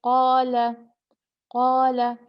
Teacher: الف کو 2 حرکت لمبا کھینچیں گے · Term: الف مد